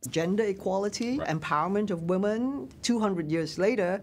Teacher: you don't hear the R's as you see them in spelling